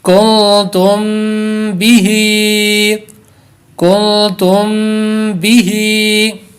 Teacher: میم ساکن کے بعد حرف با ہے، تو اس لیے یہاں پر اخفاء شفوی کا قاعدہ لگے گا